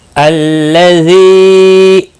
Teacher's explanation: ذی یا مدہ ہے، ایک الف کے برابر کھینچ کر پڑھیں گے